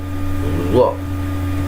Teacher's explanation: Jadi harus bulat zo, jangan sampai keluar z-nya ya